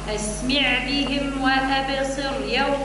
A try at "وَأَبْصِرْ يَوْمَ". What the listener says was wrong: وأبصر يوم، رقق الراء قبلها كسرة، وأبصر، وأبصر. وأبصر زيد رقق مش وأبصر، وأبصر.